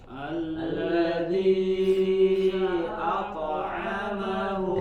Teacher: Alladzi ato ya, kemudian ada huruf hamzah a ya, dan huruf to ya, huruf to-nya tebal dan dipantulkan, tapi hamzahnya tidak menjadi ikut tebal